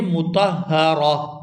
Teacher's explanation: را پر زبر ہو یا پیش ہو تو را کو پر ادا کرتے ہیں، تو یہاں را پر زبر ہے تو اس کو پر ادا کریں گے